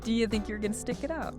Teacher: That you are often becomes your or even just yah.